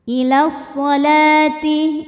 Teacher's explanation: Lam mad thobi'i muqaddar karena huruf lam berbaris fathah panjang. Cara bacanya panjang lamnya dua harakat. Ila sholati, ini wawunya jangan dibaca ya, lewatin.